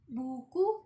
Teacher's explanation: Contohnya itu jika kita mengucapkan kata buku dan juga paku. Nah, bunyi vokal ini paling tertutup di belakang menghasilkan suara bulat dan juga padat · lidah tinggi di belakang, bibir dibulatkan penuh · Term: vokal U